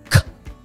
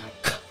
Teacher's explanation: If you put your hand in front of your mouth and you do K, you can feel the air actually hitting your hand. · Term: K sound